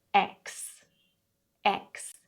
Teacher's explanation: We start off with a short E, a K, and then S.